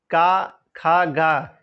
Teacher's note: जीवा या जीव के मूल से इनका उच्चारण होता है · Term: जीवा मूली